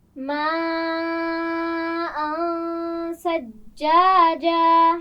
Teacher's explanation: ماءً بڑی مد ہے، خوب کھینچ کر پڑھیں گے اور یہاں پر غنہ بھی ہوگا